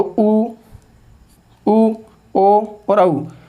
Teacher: आपका जो ओष्ठ है वो किस प्रकार की स्थिति में हो, गोलाकार स्थिति में हो